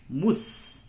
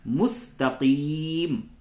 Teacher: بغیر نقطے والی جو سین ہوتی ہے اسے چھوٹی سین کہتے ہیں. اس میں ایک طرح کی سیٹی کی آواز نکلتی ہے. میم سین پیش مس، تا زبر تا، قاف یا زر قی، مستقی، میم زبر ما، مستقیم.